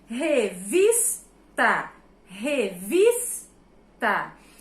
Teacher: Eu sei que a sílaba tônica é vis, é a penúltima sílaba da palavra